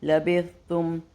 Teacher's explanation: لبث سا کا دھیان رکھتے ہوئے سیٹی نہ ہو